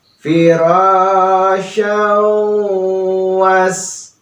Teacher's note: Nah, di sini tanwin bertemu dengan wa ya, huruf waw. Maka itu merupakan idgham bi gunnah ya. Jadi bi-nya dengan gunnah mendengung ya.